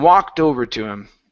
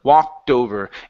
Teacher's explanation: Get that T sound in there. Connect it to the word over. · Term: T that's connected